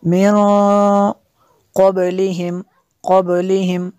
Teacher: قاف حروف اخفا میں سے ہے تو یہاں پہ اخفا ہوگا اس لیے غنہ کیا